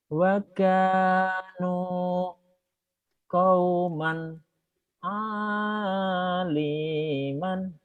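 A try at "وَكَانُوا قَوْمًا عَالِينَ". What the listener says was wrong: Alina bukan aliman ya Pak.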